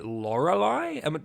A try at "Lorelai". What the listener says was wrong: Yeah, Lorelai, not Lorelai. Lorelai. But it's Lorelai, like lo, not law.